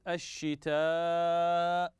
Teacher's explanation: مد متصل لاتصال حرف المد بالهمز في كلمه واحده فلما اتصل في كلمه واحده نسمي هذا المد مد متصل وحكمه